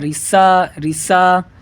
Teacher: سین پہ جب کہیں گے نا رسا رسا تو سیٹی کی آواز ہے ہلکی سی